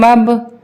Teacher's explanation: با پہ ہماری آواز پلٹ کر آئے گی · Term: کلکلا